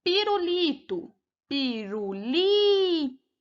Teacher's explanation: ela é uma paroxítona a penúltima sílaba é a sílaba tônica